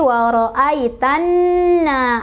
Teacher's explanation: Cara baca dari alif lam syamsiah adalah alif lamnya tidak dibaca. Jadi langsung kita masukkan ke huruf syamsiahnya, yaitu nun. Jadi waro'aitanna, alif lamnya diabaikan.